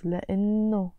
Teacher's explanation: Here you notice I'm not pronouncing the H